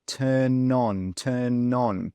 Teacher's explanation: So you can see that N and that O they come together they join together. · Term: catenation